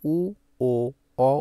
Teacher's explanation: উ, ও, অ উচ্চারণ করার সময় আমাদের জিহ্বাটা একদম পেছনে চলে যায় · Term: পশ্চাৎ স্বরধ্বনি